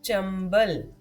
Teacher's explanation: ब से पहले अनुस्वार है और ब प वर्ग का अक्षर है, अनुस्वार की ध्वनि है म